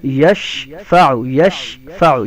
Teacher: شین کی خاصیت ہے اس کی آواز منہ میں پھیلتی ہے، ٹھیک ہے؟ پوری آواز کو منہ میں پھیلانا اس کو جنبش دینا کہتے ہیں۔